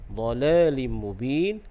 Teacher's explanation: lim mubin kasratain bertemu dengan mim, hukumnya idgham ma'al gunnah, dan kita waqaf dengan mad arili sukun 2, 4 ataupun 6 harakat.